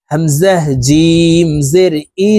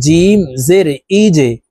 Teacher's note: জিম কলকলার হরফ ধাক্কা দিয়ে উচ্চারণ করতে হবে নিচের দিকে ধাবিত করে ধাক্কা দিয়ে উচ্চারণ করব